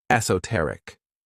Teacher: This word has 4 syllables, and the stress is on that third syllable, esoteric.